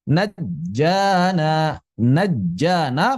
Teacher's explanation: qalqalahnya hilang karena terjadi idgham dilebur ke jim yang kedua jadi bukan dibaca najjaana tapi naj putus tuh suaranya naj.